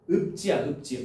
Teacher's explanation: 음절의 끝소리 규칙 돼 가지고 피읍이 비읍으로 바뀌는 거야